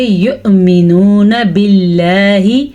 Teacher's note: یؤمنون، واو کے اوپر حمزہ ہے اور حمزہ کے اوپر ساکن ہے، تو اس کا یہ مطلب ہے یہ واو کے بجائے حمزہ پڑھا جائے گا، تو ہم اس کو یؤمنون نہیں پڑھیں گے بلکہ ہم اس کو پڑھیں گے یؤمنون باللہ، اللہ کا نام باریک پڑھیں گے